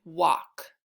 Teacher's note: al says ah the L is silent